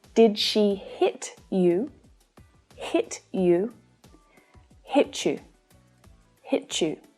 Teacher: So there is a change in these sounds when we link them together. The sounds t and y together can create ch. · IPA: /ʈʃ/